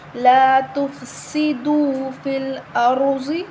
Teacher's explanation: سین کی آواز نکالیں گے، سیٹی والا حروف ہے